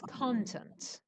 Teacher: The stress is on the first syllable and it's a noun.